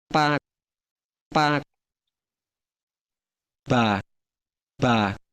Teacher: you can probably hear that pitch is the dominant property of register in this Cham dialect